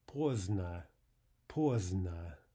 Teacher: In the word for late, we drop the D